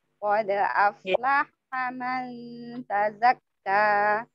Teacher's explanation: Qad aflaha, tidak boleh afa, tidak boleh dilepas dulu faksukunya. Sebelum faksukunya habis, baru ke lam.